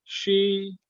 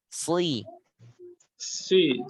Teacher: Kalau tengah lidah, shi. Kalau belakang lidah, si.